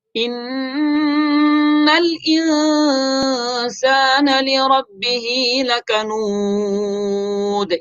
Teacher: ان میں نون مشدد غنہ کریں گے